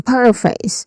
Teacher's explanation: So, it starts with the stressed syllable par. So, par it um that's the stressed syllable.